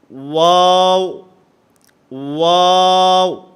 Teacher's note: واو جو ہے یہ دونوں ہونٹوں کے گول ہونے سے ادا ہوتا ہے. نہ تمام گول کرنے ہیں، آپس کے اندر ہونٹوں کو ملنا نہیں چاہیے.